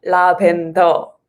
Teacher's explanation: we don't have r sound so we say la pento that they just get rid of the r